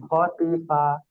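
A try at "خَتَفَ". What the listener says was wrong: মাশাল্লাহ, ইজরা করেন।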